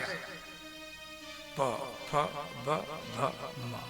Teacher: बोलते समय में आपका दोनों होठ सटेगा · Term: प वर्ग